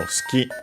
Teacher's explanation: the U between unvoiced consonants, so it's barely heard if at all